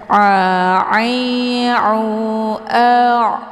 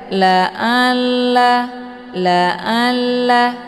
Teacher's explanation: letak posisinya yaitu di tenggorokan bagian tengah A jadi bacaan Ain ini adalah lunak Jangan dibaca Laa Laa